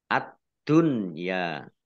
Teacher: huruf berikutnya yaitu Dal ditandai dalnya ada tasdidnya dalnya dibaca dobel nun sukun bertemu dengan huruf ya itu harusnya idgham bighunah harusnya tetapi karena dalam satu kata maka menjadi izhar dibaca jelas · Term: idhar